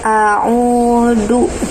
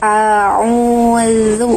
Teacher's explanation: Sementara makhraj huruf dal itu beda dengan huruf za. Kalau huruf dal makhrajnya ujung lidah ke pangkal gigi seri atas. Kalau huruf za itu ujung lidah mengarah ke ujung gigi seri atas